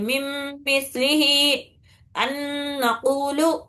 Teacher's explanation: ہم آگے آنے والا حرف ڈائریکٹلی شدت سختی کے ساتھ دو حرکت غننے کے ساتھ پڑھ لیتے ہیں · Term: غنہ شدت والا